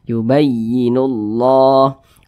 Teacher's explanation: alif lam syamsiyah atau biasa disebut juga dengan Idgham Syamsiyah sehingganya huruf lamnya ini dia tidak dibaca yang di sini langsung masuk di huruf yang di depannya